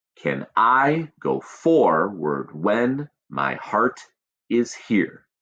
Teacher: short and long, short, long, short, long, short, long, short, long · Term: iambic pentameter